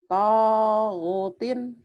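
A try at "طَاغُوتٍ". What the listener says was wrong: To-nya panjang, go-nya panjang.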